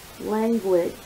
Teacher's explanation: I noticed that with language, you actually hear the U in the form of a W. Additionally, there are two G's in this word, and one of them is hard and the other one is soft.